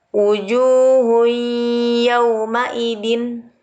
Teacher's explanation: Yaitu cara membacanya dengan melebur atau disertai dengung atau menyembunyikan nun mati atau tanwin, lebur ke huruf hidup berikutnya dengan dengung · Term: idgham bigunnah